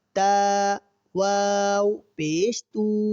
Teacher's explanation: واو مدہ کی پہچان یہ ہے کہ واو ساکن سے پہلے والے حرف پر اگر پیش ہو تو ہم اسے واو مدہ کہتے ہیں، اور واو مدہ کو ہم ایک الف کے برابر کھینچ کر پڑھتے ہیں.